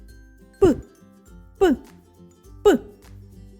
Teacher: пісенька з цього звуку не виходить його не можна Ні потягнути ні проспівати він точно вибухає звук паличкивиручалочки можна тільки почути та вимовити Подивіться як міцно стиснуті